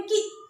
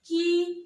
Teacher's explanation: छोटी की मात्रा का जो उच्चारण है वह जल्दी किया जाता है, झटके से, जैसे बोलेंगे की। और बड़ी का उच्चारण की देर तक किया जाता है।